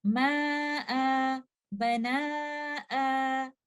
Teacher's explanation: We will stop by giving two counts of maddul iwad because this alif here is not part of the original word, and this only comes when we are choosing to stop.